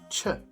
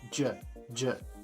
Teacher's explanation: the ch sound in Bislama is simply pronounced with a J, j, j. The PH sound in Bislama is always pronounced with a f, just like an F.